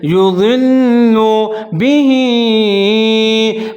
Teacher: लाम मुशद्दद है, लाम के ऊपर पेश है, ज़ौद और लाम दोनों को मिला के पढ़ेंगे, इदगाम करेंगे, जैसे युज़िल्लु बिही, बा के नीचे ज़ेर है, हा के नीचे खड़ी ज़ेर है, थोड़ा सा इसको लंबा पढ़ेंगे, जैसे बिही युज़िल्लु बिही।